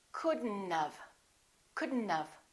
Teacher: don't pronounce the o don't pronounce the t · have not we don't say could not have look at this we pronounce the d and then we connect the d next to the n and then the o disappears but the t also disappears